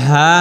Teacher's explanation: কণ্ঠনালীর মধ্যখান হইতে হলকার মধ্যখান হইতে